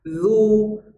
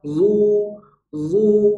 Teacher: kalau zo yang berharokat dhammah, maka bunyi vokalnya, bunyi u-nya adalah bunyi u yang tebal, dhammah yang tebal, zu, zu. Nah, maka kaidah huruf Al-Quran adalah bunyi hurufnya mengendalikan bunyi vokalnya, bunyi harokatnya.